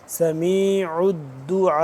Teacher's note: بڑی مد ہے، اس پہ ہم 4 سے 5 الف کے برابر اس کو لمبا کریں گے